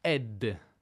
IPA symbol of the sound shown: h